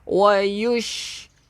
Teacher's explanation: Kita ada semburan pada huruf shin. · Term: sifat tafashi